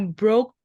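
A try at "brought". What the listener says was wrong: Broad, ya GH-nya nggak usah dibaca. Broad,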